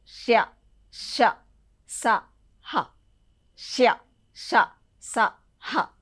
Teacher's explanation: ఊదుట వలన పలకబడేవి. ఊదడం వల్ల అంటే బయటికి గాలి ఊతాం అనమాట. ఈ పలికేటప్పుడు ష ష ఫస్ట్ ష ష స హ ష ష స హ అంటే గాలి బయటకు వస్తుంది అనమాట. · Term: ఊష్మాలు